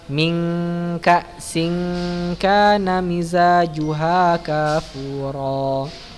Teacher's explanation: Dibaca dengan samar hampir mirip dengan antara suara N atau NG yang mendekati huruf setelahnya. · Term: ikhfa